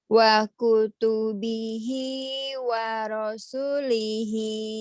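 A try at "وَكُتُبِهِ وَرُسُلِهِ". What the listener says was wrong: Waru bukan waro.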